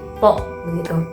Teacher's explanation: huruf to itu jelas banget pertemuan antara ujung lidah dengan gigi